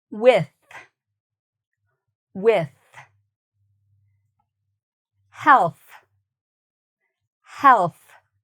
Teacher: this th is a very breathy, air-sounding th. There's not a lot of sound to it